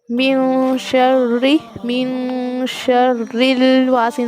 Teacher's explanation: اخفا کی یہاں پر صورت پیدا ہو رہی ہے، آپ نون کو چھپا کے پڑھو گے